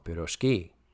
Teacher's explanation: The stress in pirozhki is properly placed on the last syllable.